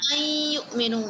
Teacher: ملا کے پڑھ رہے ہیں تو اکمل غنہ ہے